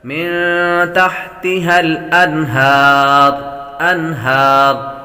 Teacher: نون ساکن کے بعد ہا حروف حلقے میں سے آ رہی ہیں، غنہ نہیں کریں گے